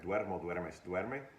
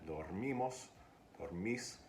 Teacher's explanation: I have duermo, duermes, duerme, and then dormimos, dormis, and duermen. So the diphthongization doesn't happen on unstressed syllables. It only happens on stressed syllables.